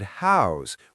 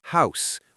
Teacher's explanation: house with a voiced Z sound at the end, not house with the unvoiced S. Now that's because this is the verb form, meaning to give a place for a person or animal to live.